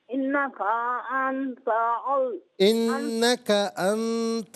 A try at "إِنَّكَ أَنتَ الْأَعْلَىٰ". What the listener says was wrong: الأعلى۔ اچھا، انکا میں جو کاف ہے اس کو باریک پڑھیے، ٹھیک ہے؟